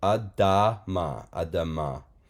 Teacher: You have the aleph, so you kind of look through the aleph to the vowel point. That is a patach shva. It's a composite shva. So it's a short ah sound.